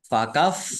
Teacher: fa-nya dibaca dobel ada tasdidnya ditekan biar tampak dobelnya